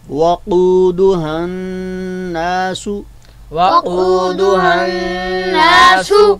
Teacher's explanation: قاف جو ہے وہ اپنے مخرج سے ادا ہوگا, یعنی زبان کی جڑ اور اس کے مقابل میں جو نرم تالو ہے جس کو ہم کوا بھی کہتے ہیں, تو وہاں سے حرف قاف بڑا قاف جو ہے وہ ادا ہوتا ہے.